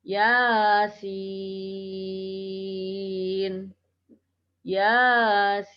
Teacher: Jadi ya-nya dibaca pendek 2 harokat, sinnya dibaca 6 harokat.